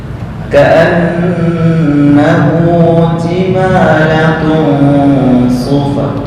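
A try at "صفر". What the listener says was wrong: Sodnya belum kurang tepat. Sufr. Ka'annahu jimalatun sufr.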